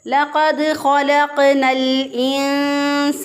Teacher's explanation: قاف جو ہے اس پہ پھر قلقلہ ہے کیونکہ حروف قلقلہ میں سے ہے، اور ساکن حالت میں بھی · نون جو ہے اس کو لام کے ساتھ ملا دیا کیونکہ الف کے اوپر کوئی حرکت نہیں، اس الف کے اوپر